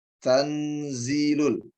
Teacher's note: ini akan menjadikan dua huruf sekaligus dimasukkan ke hidung, yakni disengaukan dua-duanya karena hukum tajwid yang disebut dengan ikhfa. Nah, di sini ada ta, ada nun.